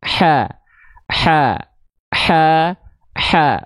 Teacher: ketika fathah dia vokalnya yang keluar bukan O bukan condong pada vokal o tapi condong pada vokal a maka dia termasuk ke dalam huruf yang tipis maka jangan lupa